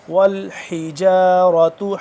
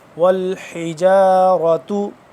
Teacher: حا کو حلق کے اوپر والے حصے سے